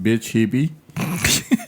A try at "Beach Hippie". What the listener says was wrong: It sounded like bitch.